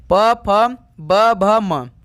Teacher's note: ओष्ठ ध्वनियां जिसका उच्चारण स्थान ओष्ठ से होता है। जितने भी प वर्ग में आते हैं वो स्थान ओष्ठ से होते हैं।